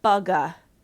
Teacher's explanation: our students will add the schwa, the vowel sound, at the end of a word that has a final consonant that is voiced. So they'll say bugga, or if the word is bud, budda.